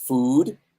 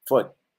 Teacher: food is long and tense, and foot is no tension on the lips and short.